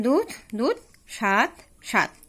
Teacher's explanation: মহাপ্রাণ ধ্বনিটা অল্প প্রাণ ধ্বনিতে পরিণত হয়ে যাচ্ছে